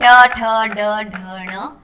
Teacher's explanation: आप अपनी जीभ को फोल्ड करोगे और एकदम पॉइंट पे सेंटर में टच करेगा, उसे मूर्धा कहते हैं। ठीक है, तालु उससे थोड़ा आगे का भाग है, एकदम सेंटर में जब टच करोगे तो उसे मूर्धा कहते हैं।